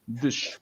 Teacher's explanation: first syllables dish, standard Portuguese D, a soft E, and that sh sound that everyone seems to struggle with